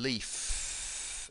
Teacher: The F in leaf, no vibration, not a voiced sound